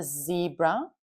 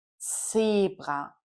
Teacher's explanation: so it's a sharp T S sound and not a Z sound as in English.